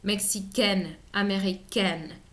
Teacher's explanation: Para el caso de AIN, américain, mexicain, agregar la E representa pronunciar la N